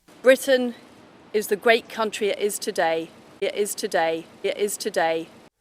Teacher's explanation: pronouncing a T as a glottal stop before a vowel, as demonstrated here by our new Prime Minister.